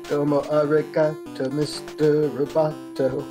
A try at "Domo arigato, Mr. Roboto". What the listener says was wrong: Domo. I was waiting for you to do the low domo, but you didn't. you didn't do it.